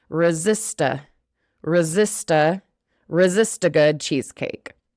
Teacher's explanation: So the last bit, resist a good cheesecake. That T goes into the A, and we almost make it into one word